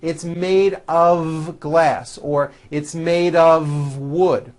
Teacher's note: It's not wood with an unvoiced F. It's all voiced and it's all connected. It's made of wood, like that.